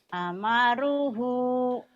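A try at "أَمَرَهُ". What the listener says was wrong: amarok, bukan ru ya bu. Amarahu, kemudian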